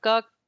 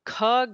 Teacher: Ka is the alpa prana and kha, the second one, would be the mahaprana with an emphasis